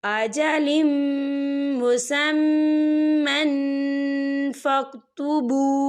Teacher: ये देखिए अजलिम मुसम्मन, मीम के ऊपर तनवीन है और तनवीन के बाद जो है फ़ा आ रहा है और फ़ा जो है इक्फ़ा का वर्ड है, तो हम यहाँ इक्फ़ा करेंगे, तनवीन की आवाज़ को नाक में छुपाएंगे।